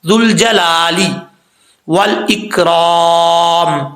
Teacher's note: لام کے اوپر کھڑا زبر ہے، 1 الف کی مقدار لمبا کیا جائے گا ، اب لا لی پڑھنا ہے، لے نہیں پڑھنا، ذوالجلالی والاکرام،